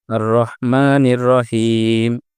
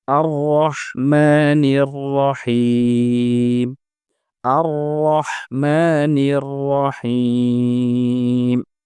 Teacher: পর থাকায় র হরফটি পুর বা মোটা হয়ে উচ্চারিত হবে এবং হা যেহেতু বড় হা এ এজন্য এটি উচ্চারণ করার সময় মুখ থেকে বাতাস বের হবে